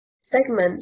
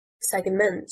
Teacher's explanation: Segment, stressing on the first syllable, means portion and is a noun. Segment, stressing on the second syllable, means to divide and is a verb.